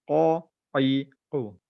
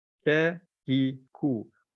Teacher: Qaf ni tebal, Kaf ni lembut sikit.